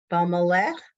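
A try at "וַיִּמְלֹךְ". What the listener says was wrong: Ve, what happened to the Y? What happened to the Yud? Vayam lich. Vayam lich.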